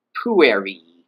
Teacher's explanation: And we can see that there's a stress accent there on the second to last syllable, called the penult, or penultimate syllable